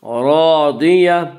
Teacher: الف مدہ کو ایک الف کے برابر کھینچ کر پڑھیں گے۔ لسعیہا راضیہ، راضیہ را کو پر پڑھیں گے، را حروف مستعلیہ را کو پر پڑھیں گے۔